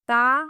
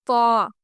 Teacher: تا باریک آواز کے ساتھ، تو پر آواز کے ساتھ، ان دونوں کی آواز میں فرق ہونا چاہیے۔